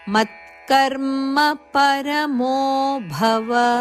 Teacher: ಮದ ಮೇಲೆ ಆಘಾತ ಇದೆ ಮತ್ಕರ್ಮ ಪರಮೋಭವ ಭಹಾಪ್ರಾಣ ವ ಅಲ್ಲಿ ಹರಸ್ವ ಪರಮೋಭವ ಭವ ಅಂತ ದೀರ್ಘ ಅಲ್ಲ ರಸ್ವವಾಗಿ ಹೇಳಬೇಕು